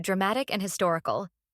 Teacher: type for suffixes like I C and i c a l the stress falls on the penultimate syllable which is the second to last syllable of the word